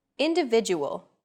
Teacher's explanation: the stressed syllable V in individual is deemed more important so it's pronounced longer than all other syllables